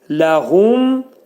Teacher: Ləhum ağız yumulur, mim eşidilir.